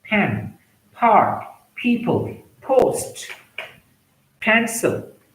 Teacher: P followed by a vowel sound that is plosive sound, such as stop in your mouth and release with an explosion.